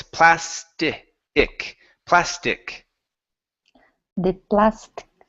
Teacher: so you're saying plast you're skipping the vowel